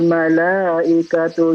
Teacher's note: Malaikatu ini mat wajib ya. Wajib dibaca 5 atau 4 harokat ya. Dipanjangkan.